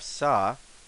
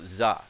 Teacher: So if we look at here, we have sa. So if we voice it, it goes za.